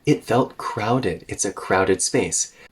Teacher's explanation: about the Rhythm a little bit here crowded and well organized I'm stretching out crowded because it's the most important thing about how I feel about this space